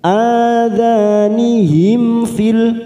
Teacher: mim sukun bertemu fa, namanya idhar safawi. Kita baca jelas tanpa mendengung. Nihim fil, masuk kata al-qamariyah, lam ta'rif fil.